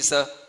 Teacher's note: और एक होता है स, जो हम सामान्य से बोलते हैं दंती स, इसको दांतों से बोला जाता है, इसलिए दंती सा कहलाता है